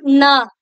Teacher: நாவுடைய நுனி மேல் அன்னத்துடைய முன்பகுதியை தொடுறதுனால பிறக்கக்கூடியது. இந்த இடத்துல, அதாவது இந்த பல்லுக்கு முன்னாடி இருக்கக்கூடிய அந்த முன்பகுதியை வந்து தொடங்கும். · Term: 2 சுழி நா